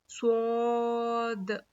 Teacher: जुबान की नोक को नीचे के दो दांतों के जड़ में लगाने से स्वाद अदा होता है।